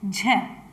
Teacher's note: झ का उच्चारण स्थान तालव्य है।